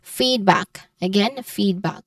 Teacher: So this the primary stress is on the fade or the first syllable. So you say it as feedback.